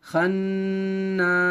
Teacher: نون کے اوپر جب تشدید آ جائے تو غنہ کرنا ہوتا ہے, ناک میں تھوڑی دیر آواز کو روکنا غنہ کہلاتا ہے